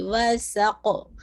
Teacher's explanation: پورا خمس کے ساتھ اور سین کی وسلنگ ساؤنڈ کے ساتھ